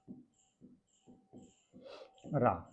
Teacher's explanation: प्रकंपित, जीभ में कंपन उत्पन्न होता है